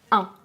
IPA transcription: ɛ̃